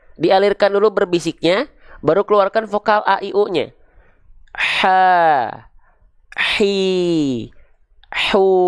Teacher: Kalau teman-teman lafalkan tepat dari bagian tengah tenggorokan teman-teman sekalian, pasti dia akan mengalirkan nafas yang berbisik.